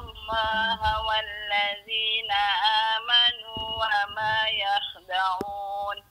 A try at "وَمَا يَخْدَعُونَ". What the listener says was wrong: Yang tu mungkin orang Johor, orang Jawa ni dia tak boleh nak keras sikit. Kalau boleh keraskan sikit tu. Wa ma yakhda'u.